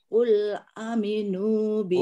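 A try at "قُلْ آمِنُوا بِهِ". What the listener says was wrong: Qul a, hanya panjang.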